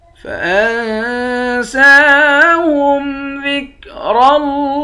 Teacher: نون پر اخفا کریں گے، سین کے اوپر کھڑا زبر ہے، کھڑے زبر کو ایک الف کے برابر کھینچ کر پڑھتے ہیں. را کو موٹا پڑھیں گے، لفظ اللہ کے لام کو موٹا بھی پڑھیں گے، ایک الف کے برابر کھینچیں گے، اس کے اوپر کھڑا زبر ہے، آخر میں ہاں ساکن ہے.